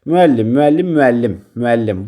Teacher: Vurğu ikinci hecanın yox, sonuncu hecanın üzərindədir. Yəni üçüncü hecaya düşür.